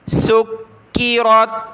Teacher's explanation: کاف پر یہ تشدید ہے اور اس کو ہم نے سختی کے ساتھ پڑھنا ہے، باریک کر کے، موٹا نہیں کرنا